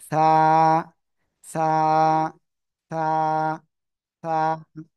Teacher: জিব্বার আগা উপরে দুই দাঁতের আগার সঙ্গে লাগাবেন। লাগিয়ে হালকা বাতাস বের করে এক আলিফটা নিয়ে নরম করে উচ্চারণ করবেন